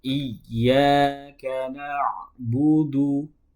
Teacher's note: huruf dal itu keluarnya dari ujung lidah bertemu dengan pangkal gigi seri atas